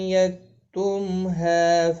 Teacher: میم ساکن کے بعد ہا ہے، اظہار شفوی ہوگا